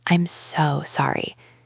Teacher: This extra length on the word so shows that your feeling is genuine. · We let the word so be a little bit longer.